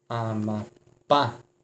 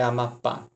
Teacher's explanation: tem a sílaba mais forte na última sílaba